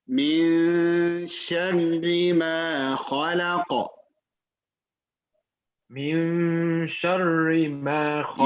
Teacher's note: Sheen in Arabic is a light letter. It's not heavy, so you don't see sha.